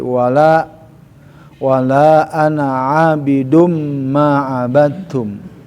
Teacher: walaupun ada alif tidak memberikan harokat panjang pada harokat na ya, bukan mad tabi'i, jadi dia harus dibaca pendek, ada sifrul, ada tanda bulat lah.